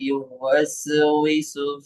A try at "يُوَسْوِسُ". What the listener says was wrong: আচ্ছা এই ইউয়াস উইসু এই শব্দটা আরেকটু পরিষ্কার করা দরকার। ইউয়াস উইসু, আল্লাযী ইউয়াস উইসু, আল্লাযী ইউয়াস উইসু। আপনার ক্ষেত্রে যেটা হলো যে ইয়ার উচ্চারণটা একটু দীর্ঘ হওয়া, উম, তারপর ওয়াস সিনের উচ্চারণটা চালু থাকার ক্ষেত্রে একটু বাধাগ্রস্ত হওয়া, এই বিষয়টাকে একটু ঠিক করা দরকার।